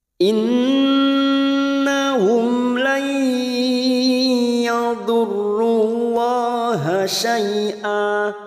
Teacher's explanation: Nun yang bertasdid gunnah musaddadah kita tekan selama tiga harokat atau tiga ketuk.